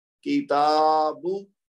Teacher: کاف کو بھی لمبا نہیں کریں گے، با کو بھی لمبا نہیں کریں گے، لیکن تا کو لمبا کریں گے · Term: کھڑا زبر